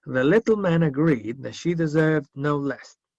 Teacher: es muy sutil la D, así que como que pasa repiola. Agree that, she, agree that.